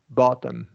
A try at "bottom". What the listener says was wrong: So I think you got tangled up here. You're thinking glottal, right? flap T. Yeah, bottom. Yeah, that the double T.